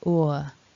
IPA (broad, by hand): ʊə